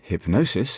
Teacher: in hypnosis, for example, the middle syllable receives accentuation